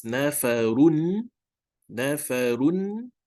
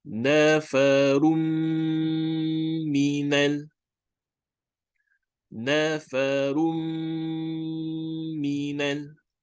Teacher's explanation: So we have to lengthen the mim sound for 2 counts. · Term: gunnah